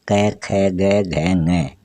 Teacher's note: क, ख, ग, घ, ङ, इनको बोलते हैं कंठे स्पर्शी व्यंजन